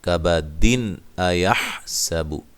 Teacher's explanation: کبد، دال پہ قلقلہ کرنا ہے وقف کی صورت میں، واضح طور پہ جب ملا کے پڑھیں گے تو پھر یہ نون تنوین کا اظہار ہوگا، غنہ نہیں ہوگا۔